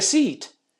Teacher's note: sound and it's open if I say please take a seat seat is lengthened and it's closed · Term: long e